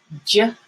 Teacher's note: And you have to voice the J. · the J sound has like a little D first. The D is a stop sound.